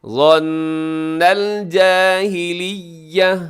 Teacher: آخر میں تا ہے، وقف کریں گے تو گول تا ہے، وقف میں ہا سے بدل جائے گی